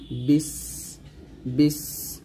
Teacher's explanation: বাজের বি যদি হয় তা এই বেগের সিনকে ধরবে তাহলে হবে বাজ সিনজের বিস। এখানে বাতাস বের করবেন, সিনটা হামসে হরফ এরকম বিস বিস।